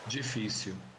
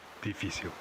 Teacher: you can hear the Brazilian G sound at the beginning, while in the European word it's D. You can also hear the Brazilian L as it's pronounced at the end of a word or syllable, like w.